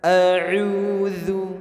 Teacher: Pelafazan hamzah ini dari pangkal tenggorokan.